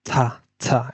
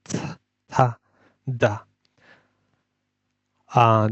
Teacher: এগুলোর উচ্চারণের স্থান হচ্ছে জিহ্বার আগা আর দাঁতের সামনে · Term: ডেন্টাল